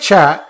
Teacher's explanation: this cha reverberates so it's a palatal right